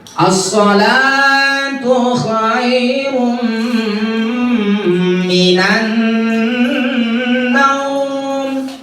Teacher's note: Jadi dia as-sholah, la-nya panjang 2 ketukan.